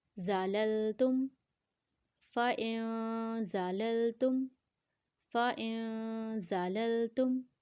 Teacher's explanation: زا کو سختی سے پڑھیں گے کیونکہ سٹی والا حروف ہے تو سٹی کا ساؤنڈ آئے گا